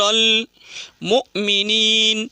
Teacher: حمزہ ساکنہ پڑھنے میں جھٹکا ہوتا ہے